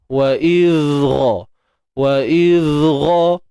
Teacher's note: Kita kena faham zal ni bersifat rakhawah, suara mengalir. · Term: huruf zal